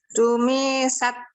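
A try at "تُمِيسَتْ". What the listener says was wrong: Nah, bagus, tapi mimnya pendek aja.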